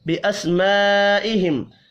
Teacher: بڑی مد کو 5 الف کے برابر کھینچ کر پڑھنا ہے، ملا کر پڑھنے کی صورت میں یہاں پر اظہار شفی ہوگا، غنہ نہیں کریں گے۔